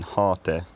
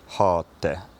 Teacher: the T was held for longer